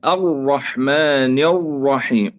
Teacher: يعني المبالغة في إخفاء التكرير، المبالغة في إخفاء التكرير، مع أن التكرير صفة لازمة للراء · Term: حصرمة الراءات